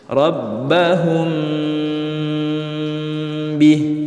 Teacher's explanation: Hanya terjadi apabila mim sukun bertemu dengan huruf ba. Cara bacanya, mim sukun dibaca dengung. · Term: ikhfa syafawi